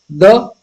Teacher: द ये भी आपका दंत्य वर्ण है